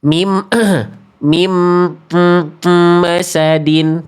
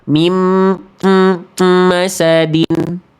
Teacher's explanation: Nun sukun ketemu mim. Udah pasti dengung.